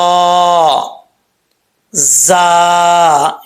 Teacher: जा सीटी के साथ है जब तक इसमें सीटी नहीं आएगी उस वक्त तक यह सही तरीके से नहीं पढ़ा जाएगा